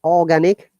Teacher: british english no r sound